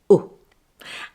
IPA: ʊ